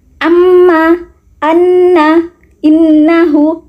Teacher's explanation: Jadi berdengung ketika melafalkan amma, seperti itu. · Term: gunnah